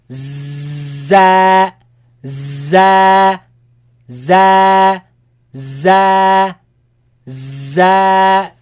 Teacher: It's a Z sound. And with alif, make it long. It's a light.